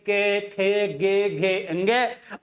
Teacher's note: के वर्ग का उच्चारण स्थान क्या होता है साथियों? आपका कंठ होता है।